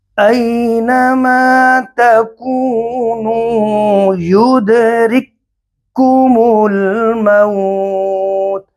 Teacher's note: دو کاف ایک ساتھ، پہلا کاف ساکن دوسرا کاف تشدید والا. پہلے کاف کو دوسرے کاف کے اندر ہمیں مدغم کرنا ہے، ملانا ہے. دونوں کاف ایک جیسے ہیں، یہ شرط، پہلا شرط ہے، وہ ایک جیسے حروف ہے.